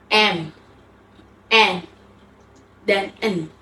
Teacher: Udara diarahkan keluar melalui hidung. Contohnya M, N, dan N seperti pada kata bank. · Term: nasal